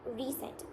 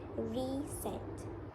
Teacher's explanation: As we can see here, the way we pronounce recent, our tongue is in a close mid-front position where the front of the tongue is quite close to high palate. Recent. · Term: front vowels